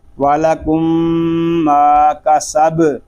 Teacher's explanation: اس کو سب اس طرح نہیں پڑھیں گے بلکہ با ساکن ہے، اس میں کلکلہ خوب ظاہر کریں گے